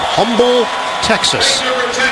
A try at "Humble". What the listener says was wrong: Humble. The H is silent, my friend.